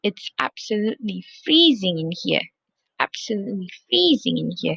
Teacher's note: So again, for the absolutely, you stress the first syllable, which is ab, and then for the extreme adjective, it depends.